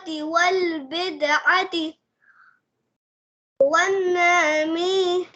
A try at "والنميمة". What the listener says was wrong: नून को खींचना नहीं है।